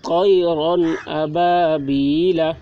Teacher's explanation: اظہار ہوگا تو اظہار کو پڑھنا کیسے ہے؟ بلا غنہ کے جلد پڑھنا ہے۔ جیسے طیرن ابابیل، یہ رن جو ہے اس کو جلدی پڑھنا ہے، یہاں پر اظہار واقع ہو رہا ہے۔